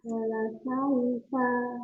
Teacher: Ya, wala sau bukan sau, tapi wala sau tidak membulat tapi dengan dimajukan kedua bibirnya